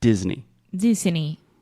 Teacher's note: the EY at the end. A lot of Brazilians have the tendency to say A, but this is E, just like E mais alguma coisa.